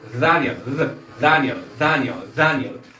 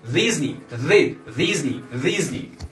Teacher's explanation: español decimos Disney y en inglés Ellos dicen Disney Disney Disney Porque la letra d deja escapar un poco de aire en el inglés